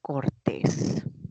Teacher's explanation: Entonces, la palabra cortés se tiene que tildar porque es un adjetivo que tiene la mayor fuerza de voz en la última sílaba, o sea, es aguda.